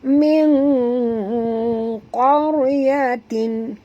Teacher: Jadi bunyi dia bukan min qaryatin, bukan bunyi min walaupun eja dia min, tapi bila kita masuk saja hukum tajwid, nun ini kita kena sorok dalam qaf ini jadi bunyi dia ming. M-I-N-G ming. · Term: ikhfa haqiqi